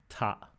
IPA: tʰˤaʔ